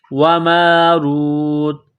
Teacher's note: جب وقف کریں گے تو تا کو سائلنٹ کریں گے